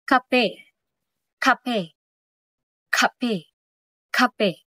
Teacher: ang likod ng dila ay sumasayad sa ngala-ngala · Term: pasara